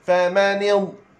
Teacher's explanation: Lidah kita kena duk tepi apabila kita sebut huruf dad.